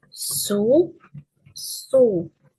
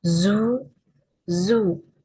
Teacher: The difference is in voicing. S is voiceless and z is voiced.